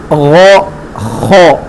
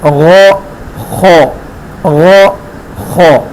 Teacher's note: اور یہ دونوں حروف یہ کیا ہے، حلق کے جو ادنا حلق ہے، منہ کی جانب، حلق کا اوپر والا حصہ جو منہ سے متصل ہے وہاں سے ادا ہوگا، غو خو، یہ دونوں موٹے ادا ہوتے ہیں، غو خو غو خو۔